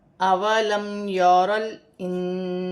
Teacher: میم ساکن میں غنہ نہیں ہوگا، را موٹی پڑھی جائے گی اور را کو لام کے ساتھ ملا کر پڑھا جائے گا۔